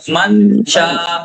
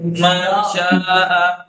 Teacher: آپ ظاہر نہیں کریں گے من شاء اخفا کا مطلب ہے نون کو ناک سے ادا کریں گے مخرج پر نہیں ٹکر ماریں گے ٹچ نہیں کریں گے مخرج کے پاس اپنی زبان لے جائیں